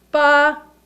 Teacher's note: first tone is high pitched